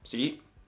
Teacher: Now, it's very close to tone two, so it's a little challenging. It's a rising tone as well, but the rise is not as dramatic because it only goes from low to mid rather than low to high. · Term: mid rising tone